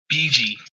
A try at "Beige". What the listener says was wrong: 1 syllable. 1 syllable. Do you not know what a syllable is?